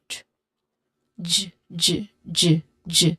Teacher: this is a voiced sound because my throat vibrated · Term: J sound